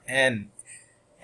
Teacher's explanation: is an alveolar nasal consonant all right similar to m the soft palate is lowered but · similar to m the soft palate is lowered but this time the tip of the tongue touches the alveolar ridge which is right at the top behind our teeth